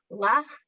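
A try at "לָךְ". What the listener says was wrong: No, not chaf. What's that letter at the end? At the end of a word is silent.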